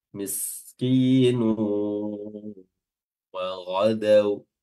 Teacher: Ya, yang pertama hilang mad arid lisukunnya dua harakat saja, dan yang kedua ada hukum idgham bi gunnah ketika kita wasal di situ, ya, nun apanya, tanwinnya langsung masuk ke huruf waw